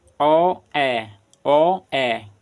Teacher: जिनको बोलने के लिए हमारा मुंह थोड़ा खुलेगा वह अर्ध समृत स्वर कहलाता है